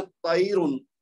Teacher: طیرن ہم نے پورا پڑھا ہے تو پھر تو را کو موٹا پڑھیں گے